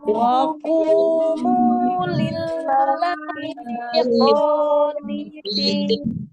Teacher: ada waw sukun sebelumnya dhamma di huruf qaf, maka dibaca ku 2 harakat.